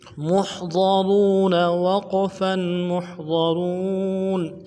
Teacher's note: ہے، واو مدہ کو ایک الف دال میں کھینچیں گے اور نون کو نرم سے ادا کریں گے، وقف کی صورت میں ساکن کریں گے، بغیر وقف کے زبر کے ساتھ پڑھیں گے